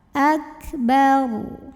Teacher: Karena huruf sebelumnya berharokat fathah, maka ro-nya ini dibaca dengan tebal. Pangkal lidah diangkat.